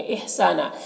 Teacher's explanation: سا میں الف مدہ ہے، ایک الف کے برابر کھینچیں گے اور یہاں پر دو زبر ہیں، دو زبر پر وقف کرتے ہیں تو ایک زبر کے ساتھ الف پڑھتے ہیں اس طرح سے۔